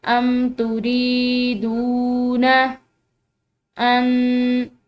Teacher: रॉ के बाद जो है या है, ठीक है, या साकिन है, और इसी तरह दाल के बाद वाव साकिन है, तो इन दोनों को लंबा पढ़ेंगे